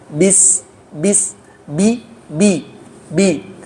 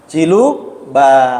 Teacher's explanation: huruf ba itu tidak mengeluarkan hembusan napas, tidak ada tiupan napas dari bibir ketika melafalkan huruf ba